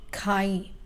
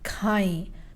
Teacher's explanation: we are going to add e like a nasal sound in the ending of the verb